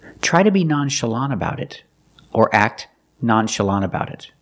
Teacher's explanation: the tongue goes up to make the T position but you don't really hear it · the NT at the end of the word is between vowels when you link the words so you don't really hear the T